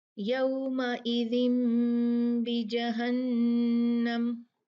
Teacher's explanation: جو نون ساکن ہے اس کو میم سے بدل دیتے ہیں اگر اس کے بعد تنوین یا نون ساکن کے بعد با آئی ہو. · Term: اقلاب